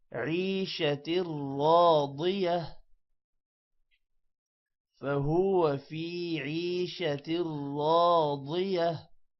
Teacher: را موٹا ہوگا، ضاد بھی موٹا ہوگا